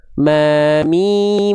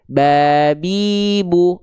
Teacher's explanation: huruf yang keluar makhrajnya dari syafatain alias bibir. Mim dari bibir ma mi huruf ba juga dari bibir.